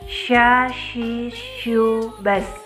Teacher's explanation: Huruf sya keluar dengan menyentuhkan tengah lidah kita dengan langit-langit. Diucapkan mengalir udaranya dan mengalir pula nafasnya. Bahkan ketika kita melafalkan huruf sya, menyebar nafasnya dan udaranya yang disebut juga dengan tafasi.